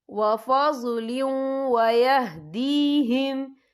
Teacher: फ़ी रहमतिम मिन्हु वफ़ज़लिन वयहदीहिम, या देखिए वफ़ज़लिन, लाम के नीचे तनवीन है, तनवीन के बाद जो है वाव आ रहा है और वाव जो है हुरूफ़ यरमलून में से है तो यहाँ पर इदगाम होगा तो हम इसे थोड़ा सा गुन्ने के साथ पढ़ेंगे